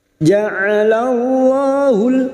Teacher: Ja'alallahul ka'batal baital harama qiyaman linnas. Lam jalalah yang didahului fathah kita baca tafkhim.